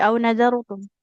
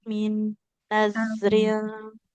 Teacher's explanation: Roknya tebal ya, karena rok sukun didahului huruf berharfat fathah.